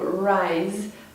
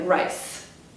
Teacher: Z does not exist in some dialects of Chinese, so rise might sound like rice.